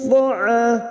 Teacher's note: huruf ain fathah diikuti alif 2 harokat mad tabi'i